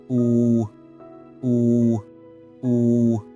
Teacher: Next is oo, with rounded lips. It's the midtone.